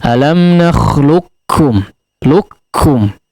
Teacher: Alam nakhluqkum, luqkum, ya, langsung masuk kepada huruf kafnya, qafnya melebur secara sempurna, seperti tidak ada qaf lagi, tapi ada dibaca seperti double kaf di situ, ya, atau dua huruf kaf. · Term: idgham kamil